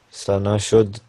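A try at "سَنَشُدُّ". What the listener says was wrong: Sana should. You need to pronounce a bit more the shad on the dal.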